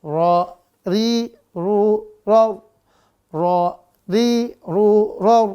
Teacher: ro ini pun setiap beda tanda baca maka beda pula sifatnya sifat aslinya dia ada tipis kalau dia Ro maka dibaca tebal RI dia dibaca tipis ru tebal ro juga tebal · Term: huruf ro